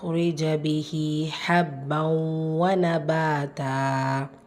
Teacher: நூன் ஃபத்ஹானா பாலா அலிஃப் மத்தா இரண்டு ஹரக்கத் அளவு நீட்டம் கொடுத்து ஓதணும்